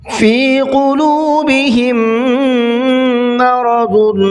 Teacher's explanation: فی قلوبہم کہ میم میں غنہ کرنا ہے، تھوڑا سا اخفا کرنا ہے